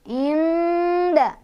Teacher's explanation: Cara bacanya nunnya dibaca samar-samar sambil berdengung. Nah, karena dal itu dekat dengan huruf nun, makhorijul hurufnya atau tempat keluar hurufnya, maka ini dengungannya tuh lebih sedikit, tapi samar-samarnya lebih banyak. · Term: ikhfa aqrab